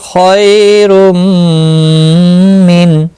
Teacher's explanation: یا لین ہے، تھوڑا نرمی کے ساتھ کھینچ کر ادا کریں گے. خواہ مستعلیہ ہے، پر پڑا جائے گا.